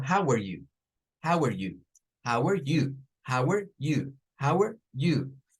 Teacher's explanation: En vez de tener 1, 2, 3, en vez de tener 1, 2, 3, vienen y aquí van a tener miren, 1, 2, 1, 2, 1, 2. ¿Dónde va a caer ahora la fuerza de voz? En el you.